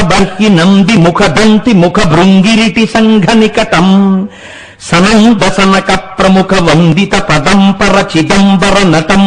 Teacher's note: ఎక్కడా దీర్ఘం వాడలేదు ఆయన ఒక్క దీర్ఘాక్షరం లేకుండా శివతాండవం ఎలా ఉంటుందో అటువంటి శబ్దాలే అందులోకి వచ్చేటట్టుగా ఆయన శ్లోకాలు చెప్పారు